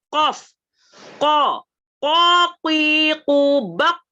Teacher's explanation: Makanya qaf pun agak dalam karena dia menuju ke tenggorokan.